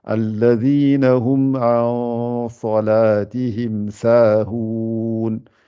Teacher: Il n'y a que le sad qui est gonflé, le runna ici, et toutes les lettres qui viennent après ne sont pas gonflées. Donc, vous remettez bien la langue pour ne rien gonfler.